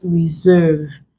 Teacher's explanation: The S there contains Z sound, not S.